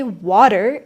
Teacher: that T sound in the middle or at the end of a word often softens into an almost D sound or disappears completely. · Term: dropped T